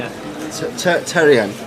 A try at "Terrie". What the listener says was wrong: There's no N in it. You can't make him a letter. Terry, we knew that.